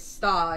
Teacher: the r isn't pronounced that's called non-rhotic